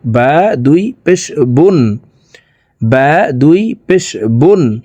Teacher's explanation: দুই পেশ আছে তাই নুন যুক্তভাবে ঠোট গোল করে তাড়াতাড়ি করে পড়বো